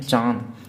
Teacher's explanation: तो चांद में मुंह से ज़्यादा साउंड निकलेगी, नाक से कम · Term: चंद्र बिंदु